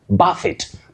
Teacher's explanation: Now, the next word is from French, and that T at the end is only pronounced when you use this word as a verb to hit very hard, to buffet